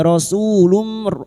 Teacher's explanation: masuk pada huruf mim dan mendengung selama 3 harokat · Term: idgham bi gunnah